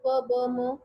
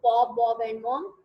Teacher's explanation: बायलेबियल्स involve both lips